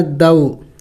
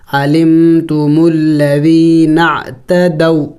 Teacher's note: دو اس کو لمبا نہیں کریں گے، حروف لین میں سے ہے، جل پڑھیں گے.